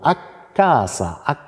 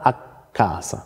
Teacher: das K ist länger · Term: Längung